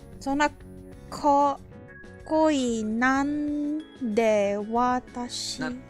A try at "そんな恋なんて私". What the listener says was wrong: It's not exactly なんで. Be careful. そんな恋なんて私.